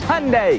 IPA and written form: ˈhjʌndɛ (Hyundai)